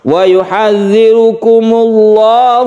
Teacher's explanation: yang dibaca tebal atau tafkhim karena sebelumnya ada dhomah